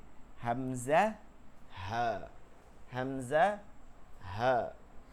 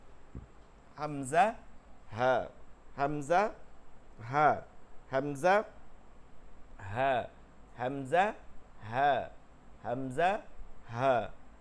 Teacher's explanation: দুইটা গম্ভীর আওয়াজে উচ্চারণ করতে হয়, কোনো নাকের মধ্যে নেওয়া যাবে না, ইজহার করে স্পষ্ট করে পড়তে হবে